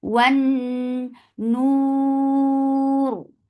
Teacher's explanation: Noon you get sifa of gunna and this gunna is atmal, so keep the sound in your nose for a longer time.